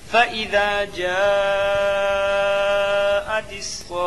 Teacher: فَإِذَا جَاءَتِ الصَّاخَّةُ میں مد لازم ہوگا، حرف مد کے بعد والے حرف پر تشدید ہے، اس لیے مد لازم ہوگا۔ مد لازم کو 4 الف 5 الف کے برابر کھینچ کر پڑھیں